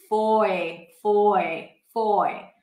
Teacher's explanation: So here we actually round the lips for an O sound. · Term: diphthong